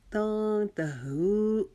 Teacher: ہو کو ہم ایک الف کے جتنا لمبا کھینچیں گے کیونکہ واو مدہ کا قاعدہ لگ رہا ہے